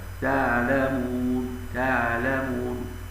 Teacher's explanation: وينطقون العين مشوبه بالهاء في كلمه تعلمون هكذا تعلمون تعلمون والصواب تعلمون اظهار حرف العين بشكل طيب كما